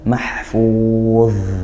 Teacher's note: karena ini dha, maka dia dialirkan suaranya mahfuz seperti zal, seperti itu. Hanya dia tebal kalau dha.